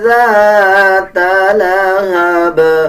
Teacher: جب زا پڑھیں گے تو یہ غلط ہو جائے گا۔ جب ذال پڑھیں گے تو ذال کو پڑھتے ہوئے زبان کی نوک دونوں دانتوں کے درمیان لے کے آتے ہیں، تب ذال صحیح ادا ہوتا ہے، یعنی ذال کو نرم پڑھا جائے گا۔